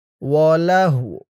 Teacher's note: এই তো চিহ্নতে অক্ফ করার কারণে উচ্চারণটা কেমন হবে খেয়াল করুন। লাহু ওয়াওয়ের আওয়াজটা লাস্টে একটু ভাসবে